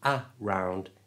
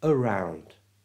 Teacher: A at the front of around is pronounced with a schwa sound, the So it's not a round, it's around.